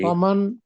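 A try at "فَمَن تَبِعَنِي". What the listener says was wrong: ومن تابعانی، آواز نہیں آئی تابعانی کی.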